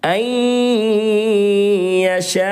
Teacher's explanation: کے 6 حرفوں میں سے یا آ رہی ہے، اس لیے نون ساکن میں ادغام مع الغنہ ہوگا، یعنی غنہ کے ساتھ پڑھیں گے